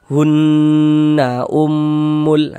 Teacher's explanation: Ini hunah hun itu kita tahan sejenak suaranya kita panjangkan. Hunnya yang kita panjangkan bukan nanya. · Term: ghunah musyaddadah